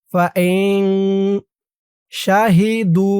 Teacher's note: নুন সাকিনের পরে ইকফার হরফ শিন ফাইন নাকের ভিতরে লুকিয়ে গুন্নাহ করতে হবে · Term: ইকফা গুন্নাহ